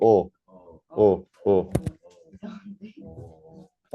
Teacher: 어인데 혀를 좀 더 뒤로 밀고 발음해서 어의 느낌을 하시면 돼요 · 발음할 때 혀가 좀 뒤로 가요. 그리고 목구멍을 좀 넓히면서 발음해요. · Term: 후설 저모음